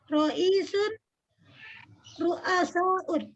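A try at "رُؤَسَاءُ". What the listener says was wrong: Nah, kalau ru'asa jangan pakai un, ru'asa'u aja ya. Ro'isun ru'asa'u ya.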